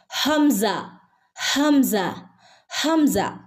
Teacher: തൊണ്ടയുടെ അങ്ങേയറ്റം തൊണ്ടക്കുഴിയിൽ നിന്നുമാണ് ഹംസയുടെ ശബ്ദം വരുന്നത് തൊണ്ടക്കുഴിയിൽ നിന്ന് നെഞ്ചോട് അടുത്ത ഭാഗം ഹംസ ഹംസ ഹംസ ഓക്കേ ഇൻഷാ അള്ളാ